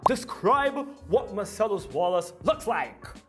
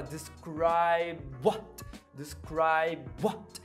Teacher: Gente, a palavra describe e a palavra what, elas têm uma junção que é uma doideira, que você vai juntar o ponto de articulação, você vai aproveitar o ponto de articulação, que é os lábios, para fazer o final de describe e o começo de what.